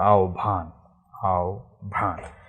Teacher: এর একটা সুন্দর সুন্দর নিয়ম আছে, সেটা হচ্ছে হর পরে যখন সংযুক্ত অন্তস্থ ব হয়, তখন এই হর উচ্চারণটা হয় না, এবং পরে বর উচ্চারণটা ভর মতো হয়, তাহলে এর শব্দের উচ্চারণ হচ্ছে আহ্বান, আহ্বান।